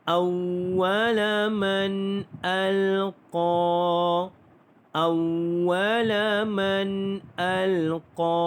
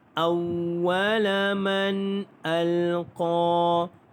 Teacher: Baik, hukum tajwidnya nun mati bertemu dengan hamzah izhar halqi, tidak ada dengung